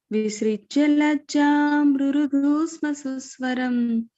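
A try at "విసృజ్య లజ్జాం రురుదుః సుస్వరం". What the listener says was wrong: Tune of ద third line మాతాజీ అదే చూసుకో. విసృజ్య లజ్జాం, అది పైకి వెళ్తుంది. Third line is different from ద first line, సో వి get confused అక్కడ.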